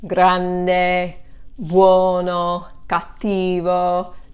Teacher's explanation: notice how most of these, the accent falls on the second to the last syllable, which is the rule for Italian pronunciation.